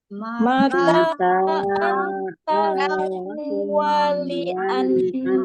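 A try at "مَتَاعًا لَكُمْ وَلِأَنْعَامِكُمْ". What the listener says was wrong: nah, bedakan ya antara huruf alif dengan ain ya. Hamzah dan ain. Wali'an a. Wali'an'a ya. Beda ya.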